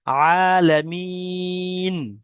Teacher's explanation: তাহলে যদি আমরা প্রথম অক্ষর প্রথম শব্দটা পড়ি, আলামিন, মিম ইয়া, নুনটাকে সাকিন করতে হবে দাঁড়ানোর কারণে